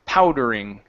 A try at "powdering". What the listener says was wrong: End on the G, not a T. One more time.